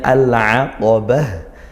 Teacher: di akhir tak marbutah ini juga dibaca ha karena dia dibaca waqaf